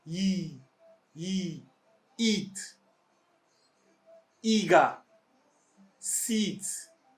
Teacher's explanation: your tongue should be high almost near your roof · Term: long E